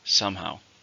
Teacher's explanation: How many syllables are in somehow? 2, stress on the first.